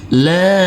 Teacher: Huruf lam kita baca panjang dengan panjang 2 harokat karena di atasnya ada huruf alif kecil yang berdiri tegak lurus.